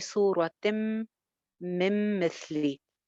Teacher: पे अगेन इदगाम हो रहा है उन्ना के साथ करेंगे तिम नून की आवाज बिल्कुल खत्म हो जाएगी